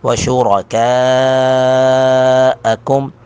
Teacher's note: پر کر کے پڑھیں گے، کاف کو باریک کر دیں گے، کاف پر مد متصل ہے تین الف کے برابر اس کو کھینچیں گے